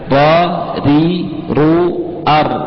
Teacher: Itu ro itu memang sifatnya namanya takrir. Tapi takrir itu jangan berlebihan dan harus dihindari.